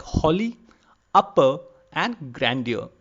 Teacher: All these words you will notice that the first part of the word is been given more stress compared to the second part. So this is the unique feature of trochee.